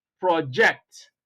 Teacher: idea so a project is the name of something and then when you place stress on the second syllable of the same word then the meaning changes from being a noun to being a verb